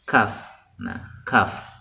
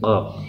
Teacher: si lidahnya juga lebih maju ke depan sedikit ya. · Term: makharijul huruf kaf